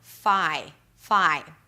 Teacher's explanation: We begin with an F sound and then it's the 'ai' as in 'my'.